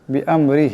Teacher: বিআমরি এখানে রা নিচে জের, রাকে পাতলা আওয়াজে পড়তে হবে।